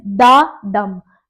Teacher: So it is da dum unstressed and stressed